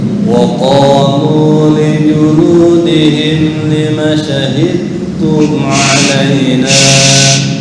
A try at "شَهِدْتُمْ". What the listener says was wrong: Shin yang kurang menyebar. Sha.